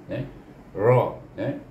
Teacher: Nir, ingat tu, iaitu apabila kita menyebut huruf ra, iaitu hujung lidah kita bertentangan dengan gusi atas gigi kacip.